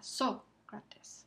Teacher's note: El acento ortográfico marca dónde está el acento prosódico en la primera sílaba.